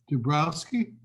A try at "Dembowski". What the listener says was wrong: Dembowski. There's no R in it. Dembowski.